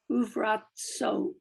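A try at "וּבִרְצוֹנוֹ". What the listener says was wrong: Son. It's a final nun.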